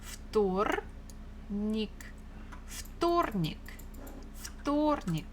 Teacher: Stress falls on O.